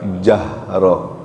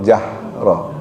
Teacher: Kalau H besar tu tenggorokannya bergetar. Jahroh. Kalau H kecil tenggorokannya enggak bergetar. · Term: ha besar